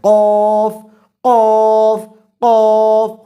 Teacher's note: تفخیم پائی جاتی ہے، موٹا پن، منہ بھر کر پڑا جاتا ہے، قاف قاف قاف، حروف مستعلیہ میں سے ہے، منہ بھر کر ادا ہونے والا حرف، قاف قاف۔